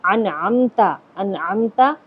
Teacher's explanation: انعمتا عین نکال کر کے پڑھا جائے گا